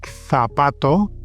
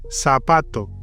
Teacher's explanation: in Spanish you can do the TH like zapato, shoe, or the S, zapato.